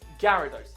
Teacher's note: You don't need to emphasize the Ara part in its name.